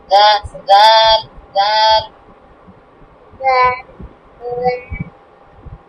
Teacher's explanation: জিহ্বার আগায় দাঁতটা, হ্যাঁ দাঁতে, দাঁতে উপরে মাড়ি দাঁতে জিহ্বার আগাটা লাগিয়ে বলো